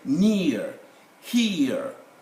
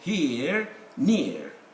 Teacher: most diphthongs, 2 sounds, like say near, here, in the RP would become monophthongs, like here, near, one vocalic sound only.